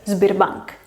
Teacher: Tiene S y luego B, entonces la S se tiene que hacer sonora, tiene que convertirse en Z